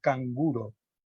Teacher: como n nosotros tenemos conceptualizado n como fennema alveolar nasal sonoro sin embargo en canguro su realización es velar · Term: realización velar